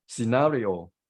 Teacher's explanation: we tend to suggest the final syllable which is not correct so the stress is on second syllable